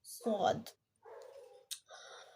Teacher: زبان کا پچھلا حصہ اوپر کی طرف اٹھے گا جس کی وجہ سے یہ موٹی آواز میں ادا ہوگا